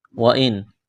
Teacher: نون ساکن کے بعد حمزہ ہے، حروف حلقی ہے، یہاں پر اظہار کریں گے، غنہ نہیں کریں گے